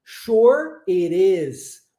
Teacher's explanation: o T é transformado em R e nós fazemos o link das palavras